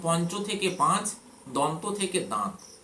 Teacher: অর্থাৎ সেই কার্য থেকে কর্য থেকে কাজ। আর নাসিক্য ধ্বনি কিন্তু লোভ পেয়েছে এবং পূর্ববর্তী স্বরধ্বনি আনুনাসিক এবং দীর্ঘ হয়েছে।